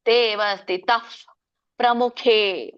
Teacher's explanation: ಫ ಹೇಳ್ತೀವಲ್ಲ, ತುಟಿಯಿಂದ ಎರಡು ತುಟಿ ಕೂಡಿಸಿದಾಗ ಫ ಏನ್ ಬರುತ್ತಲ್ಲ ಆ ಫ ಬರುತ್ತೆ